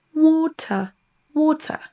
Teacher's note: Avec l'accent UK, ça va se terminer tout simplement par un son schwa. On ne dira pas water en prononçant le R, mais water, water.